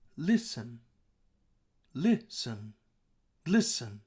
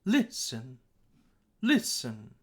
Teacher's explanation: the beginning part of listen this is higher and we consider that to be stressed